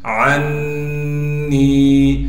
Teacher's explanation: تشدید کی وجہ سے غنہ کریں گے، اور نون کو ایک الف کے مقدار کھینچیں گے